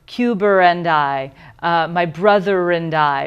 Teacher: I think there's a better word for it now phonetically, because intrusive sounds a little rude. But there's this intrusive R that comes in words that end in a vowel sound, as if it were being connected.